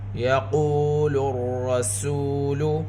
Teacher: کان الناس یقول الرسول، قاف کے اوپر پیش سات واو ساکن، واو مدہ، قاف حروف مستعلیہ میں سے ہے، قاف کو پر پڑھیں گے۔ را مشددہ، را کے اوپر زبر، را کو پر پڑھیں گے۔